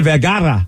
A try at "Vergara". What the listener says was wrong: Vergara. There's no D in it. Vergara.